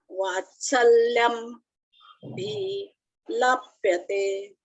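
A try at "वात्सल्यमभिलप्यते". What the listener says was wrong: वात्सल्यम अभिलप्यते, अभी अभी शब्द है ना, तो वो म के साथ उसको जोड़ के बोलो।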